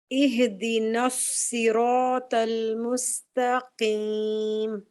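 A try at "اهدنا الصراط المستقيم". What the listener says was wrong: اچھا آپ کا نا مجھے یہاں پر لگ رہا ہے کہ ہاں ہل رہا ہے. اہ جو ہے نا یہاں پر مجھے ایسا فیل ہو رہا ہے. اب جی دوبارہ پریکٹس کریں گی نا خود گھر میں, تو سواد اور سین کو ضرور دیکھیے گا اس کو, اور جو ہے نا اس کو آپ ہلائیے گا مت, ہاں کو.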